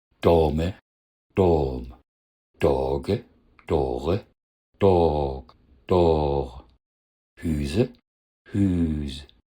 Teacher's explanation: In vielen Dialekten ist eine Endsilbe mit E weggefallen. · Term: Überlänge